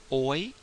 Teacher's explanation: The vowel O plus the glide, oi. Sometimes it's written the second way with the O and then the I, as in moist.